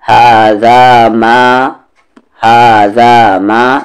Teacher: یہاں پر ہا کو دو حرکت کے اکول کھینچنا ہے · ذال کا مخرج سامنے والے دانت کا کارنر اور زبان کا کارنر